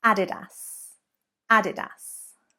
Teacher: So there you can see we're actually stressing the 3rd syllable rather than the 2nd